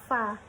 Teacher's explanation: Huruf fa keluar dari bibir bawah serta menempel dengan gigi seri yang atas.